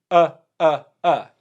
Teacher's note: the schwa come from the middle so all you're really doing is opening your mouth